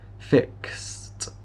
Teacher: here we have fix with Ed and yeah that will give us a t